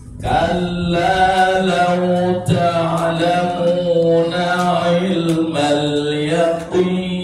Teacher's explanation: Qaf dilafalkan dengan posisi bibir mencucu, kemudian baru kasronya ya, kasronya dilafalkan dengan bibir meringis, jadi mencucunya tidak dibuang ya.